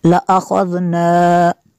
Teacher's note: خوا کو پر کرنا ہے، آگے ذال ہے، ذال کو نرم کرنا ہے۔